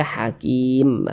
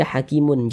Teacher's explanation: huruf mim huruf mim tidak dibaca panjang Makanya kita sukunkan n sehingga kalau kita berhenti tepat di huruf mim kita baca Hakim begitu Jangan dibaca hakimun · Maka huruf tersebut harus kita sukunkan. Kita berhenti tepat di huruf mim. Huruf mim tidak dibaca panjang. Makanya kita sukunkan.